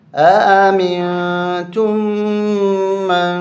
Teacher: آمنتم من، یہاں بھی اخفاء ہوگا اور یہاں پر بھی اخفاء ہوگا، ناک میں آواز چھپائیں گے